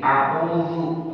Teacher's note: A'udzu bil, kemudian dal. Dal dia pada ujung lisan kita. Ini ujung bertemu dengan bagian dalam gigi seri.